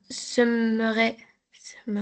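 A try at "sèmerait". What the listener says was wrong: S'aimerait. C'est pas semerait, s'aimerait. On ajoute un accent.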